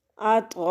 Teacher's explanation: उसके बाद हमज़ा आ गया, मद्द मुत्तसिल। 4 से 6 सेकंड तक लंबा करेंगे। गैन पेश वो, सा अलिफ मद ज़बर सा, ओ सा, हमज़ा दो ज़बर अं, ओ सा मद्द मुत्तसिल।